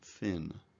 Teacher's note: the talker places the tip of his tongue through his teeth to produce the TH sound